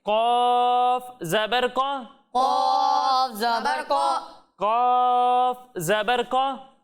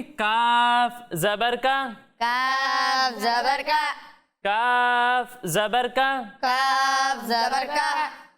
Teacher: تو قوف کو ہم موٹا پڑھیں گے اور کاف کو باریک پڑھیں گے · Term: موٹا پڑھنا